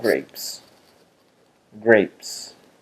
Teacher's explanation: the last sound that is pronounced is p and p is voiceless therefore it propagates the articulatory property forward to the S